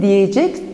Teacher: E demek fiili i ünlüsüne dönüşüyor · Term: ünlü daralması